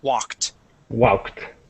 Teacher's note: this Ed ending I wanted that t to to shine out a little bit more